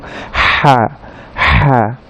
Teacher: হালক থেকে উচ্চারণ হয় হা, এবং এটা কণ্ঠনালী একেবারে মাঝখান থেকে উচ্চারিত হয় হা হা। এবং হা বলতে সময় কণ্ঠনালীর ওই মাঝখান থেকে চাপ দিয়ে একটা বাতাস সহকারে, এই বাতাস সহকারে আমরা উচ্চারণ করব হা হা। তাহলে হার মাখরাজ হচ্ছে কণ্ঠনালীর মাঝখান থেকে, এবং এটা একটু চাপ দিয়ে বাতাস সহকারে উচ্চারণ করতে হবে।